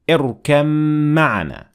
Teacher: the mim was pronounced and the ba was completely dropped